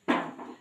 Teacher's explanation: huruf ba, yang mana makhrajnya ada di dua bibir